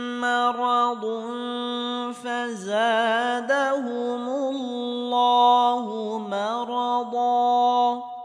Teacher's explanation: তানবিনের পরে ইকফার হরফ ফা আসার কারণে এখানে ইকফা গুন্নাহ করে পড়তে হবে